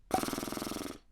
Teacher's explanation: Por ejemplo, si tratamos de hacerle como un caballito, lo que estamos haciendo vibrar son nuestros labios. Entonces es una bilabial vibrante múltiple